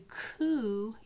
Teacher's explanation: If you do coo, your tongue, when you produce the k, is actually further back in your mouth.